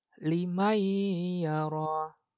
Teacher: meleburkan itu maksudnya nunnya nggak dibaca. Nunnya hilang. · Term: idgham bigunnah